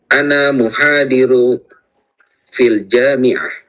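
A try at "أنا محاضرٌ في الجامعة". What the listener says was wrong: Ana muhadirun fil jami'ah. Hadirun ya. Ini afwan, ini tanda ininya agak turun sedikit. Ana muhadirun ya. Tanwinnya. Muhadirun fil jami'ah.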